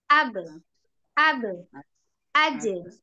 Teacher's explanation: siddah jadi siddah suaranya ditahan ditahan jangan dialirkan jangan ab ab kan naik a a enggak boleh tapi langsung